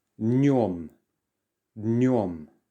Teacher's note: It's a nasal sound and you don't really pronounce the d at the start.